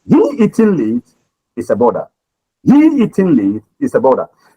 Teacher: You see the word that is stressed there is he.